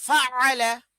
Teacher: আইনকে গলার মাঝখানে চিপে হলকের মধ্যে দেয়